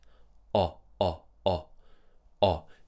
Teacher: So the lips are round and the tongue is pulling back. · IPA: /ɒ/